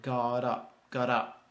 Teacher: you don't need a hard stop in the middle say like it's one word